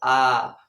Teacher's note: बहुत अधिक मुख खुलता है अर्थात लगभग मुख पूरा खुल जाता है ठीक है मुख जो है पूरा खुल जाता है तो जैसे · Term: विवृत स्वर